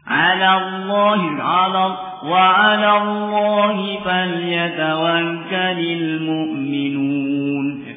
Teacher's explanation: lam yang pertama tarqiq dibaca tipis, lam yang kedua tafkhim